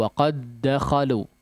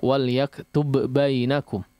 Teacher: diidghamkan sehingga tidak dimunculkan sifat qalqalahnya